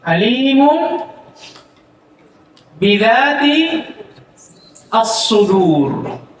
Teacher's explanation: Nun tadi dirubah menjadi mim yang dibaca dengan gunah bersamaan dengan Ikhfa ya ikhfa Maksudnya disamarkan ya disamarkan tib tiib Masyaallah ada faedah